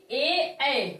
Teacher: इसे कहते हैं दीर्घ। इसका जो जीभ का स्थान है वो अग्र है क्योंकि ए ऐ हमारी जो जीभ की नोक है वो आगे की तरफ निकलती है।